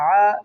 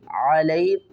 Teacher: عین کو ہم نے حلق سے نکالنا ہے کیونکہ یہ حروف حلقی ہے، حلق کے درمیان والے حصے سے ادا ہوگا